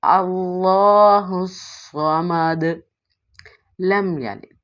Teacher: یہاں پہ کلکلہ کریں گے یعنی دال کی ادائیگی منہ کو کھول کے کریں گے